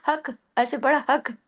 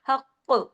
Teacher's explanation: double قاف ہے، ٹھیک ہے، پھر جب ہم رکیں گے تو ہم نے یہاں پہ دونوں قاف کی آواز کو سختی سے بیان کرنا ہے اپنے گلے میں